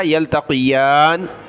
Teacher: قاف کو موٹا کیا، یا کو اوپر کھینچا